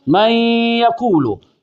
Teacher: ہے، اب یہ قریب الصفات کی صورت ہے، اسے کہیں گے ادغام صغیر متقاربین ناقص، کیونکہ نون کے صفت غنہ باقی ہے